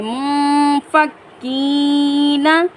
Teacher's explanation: نون ساکن کے بعد حروف اخفا میں سے ہے، تو یہاں پر ہم اخفا کریں گے، یا ساکن سے پہلے زیر ہے، یہاں پر ہم ایک الف کی مقدار کھینچ کر پڑھیں گے۔